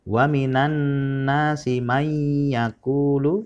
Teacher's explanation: hukum idgham bighunnah yaitu nun mati bertemu dengan huruf ya jadi dibaca mendengung